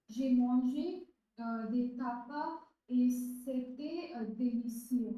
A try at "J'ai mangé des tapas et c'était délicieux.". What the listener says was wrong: Very good, délicieux, délicieux, perfect.